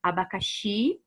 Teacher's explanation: xi é a sílaba tônica, as outras são átonas